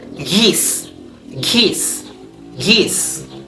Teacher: the G sound. Fronted before front vowel like geese, geese, geese. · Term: fronted allophones